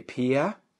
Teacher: das ist kein Diphthong, einfach nur ein langes E.